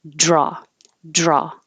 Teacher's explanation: drag it with pressure against the top of your mouth and as you drag it back and curl it back for the r that's when the air releases with a lot of pressure and creates that noise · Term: dr combinations